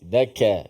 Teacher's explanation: Huruf kaf yang pertama tu huruf yang nipis.